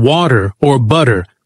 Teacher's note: the flap T, like in water or butter, where it's a soft D